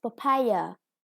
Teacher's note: with the second syllable stressed